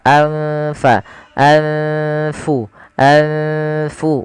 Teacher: Cara membacanya adalah nunnya disamarkan kepada fa. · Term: bacaan ikhfa